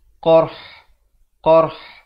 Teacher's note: Qarh qaf ra ha dalam satu bunyi yang akhirnya dimatikan pada makhraj huruf ha. Kalau kita bunyi asabahumul qarh, ha tak ada.